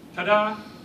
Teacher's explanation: The first syllable is unstressed. The second syllable is stressed. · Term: a single iamb